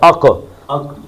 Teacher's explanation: موٹا پڑھنا ہے اور کلکلا کرنا ہے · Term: قلقلہ